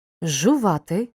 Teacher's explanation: з разом із ж вимовляємо як довгий ж річачці шиплячий ч перед свістячим ц уподібнюється до нього тож вимовляємо